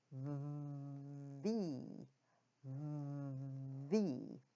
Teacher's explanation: The upper teeth come down to the bottom lip, and the air is forced out, vibrating that bottom lip. You can actually feel the lip vibrating, and at the last moment, the mouth is open and the air forces out.